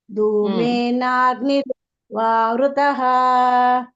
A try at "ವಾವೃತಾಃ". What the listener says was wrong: ವೃತಃ ಅಲ್ಲ ತಾಹ. ತಾ ಇದೆಯಲ್ಲ ಅಲ್ಲಿ ಮಾತಾಜಿ, ತಾಹ. ಬರ್ಬೇಕು.